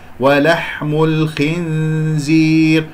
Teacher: الخنزير، الخاء من الأحرف، من أحرف الاستعلاء السبعة، خص باطن قض، الخاء مفخم مرتبة أخيرة لأنها مكسورة. نون زايدة بلا مخرج الزاي، إخفاء هنا غنة. · الحاء يجري فيها الصوت والنفس مهموس